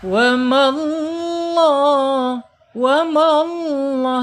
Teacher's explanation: lam jalalahnya dibaca tafhim atau tebal ya